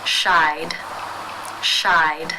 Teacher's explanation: the final sound in the infinitive is the I as in by diphthong therefore it is case 2 and the e d is pronounced as the D sound